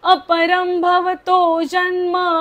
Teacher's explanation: र च्या वरचा अनुस्वार म बोलायचा आहे